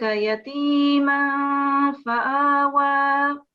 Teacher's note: So you don't pronounce the noon sound. It will be a nasal sound. It will be gunna because of the tanween here, and we've got fa following the tanween. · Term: ikhfa